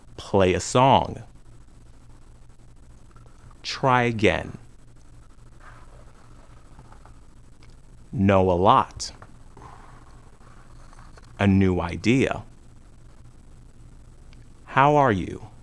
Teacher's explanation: the lips are wide and not rounded for the y sound the lips are also wide at the end of the vowels e a i and oi so we add a short y sound to link these vowels